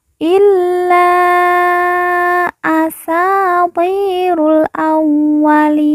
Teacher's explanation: atasnya terdapat tanda baca panjang lima harakat Illa asatirul awwalin kemudian Sa kita baca panjang dua harakat karena di depannya terdapat huruf alif yang merupakan tanda baca panjang dua harakat